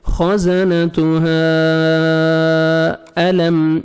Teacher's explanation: گے، آگے الف مدہ کے بعد نیکسٹ کلمہ میں حمزہ ہے، مد جائز ہے، 3 سے 4 سیکنڈ ایکسٹرا آپ نے مد کرنی ہے ، خزنتها الم، میم ساکن کا اظہار ہے جلدی پڑھیں گے،